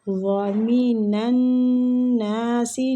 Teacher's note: نون مشدد ہے، نون پہ غنہ کریں گے اور الف مد بھی ہو رہا ہے، اس کو کھینچیں گے ایک الف